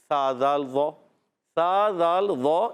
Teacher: زبان کا سرا اوپر کے دانتوں کے کنارے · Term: حروف لثویہ